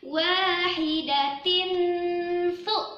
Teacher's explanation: Nah, ternyata dengung lagi, dengung yang lama. Tanwin bertemu sa, disebut dengan ikfa hakiki. Nah, hati-hati dijaga juga dengungnya, dengung yang lama.